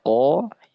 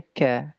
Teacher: qof ya dibaca qo kaf dibaca ya ka dia tipis ya · dan apa sifat hamus pada huruf kaf maka bunyi keduanya pasti akan bercampur ya karena makhraj ini keduanya sangat berdekatan yaitu makhraj kaf dengan qof dia keluar dari pangkal lidah akan tetapi qof ya memiliki sifat jahr dan isti'ala sedangkan kaf memiliki sifat ya hames dan infitah · qaf ya dibaca ko, kaf dibaca ya ka, dia tipis ya. Ya, walaupun keluarnya sama pangkal lidah kan, tapi dalam matan dijelaskan summal kafu asfalu.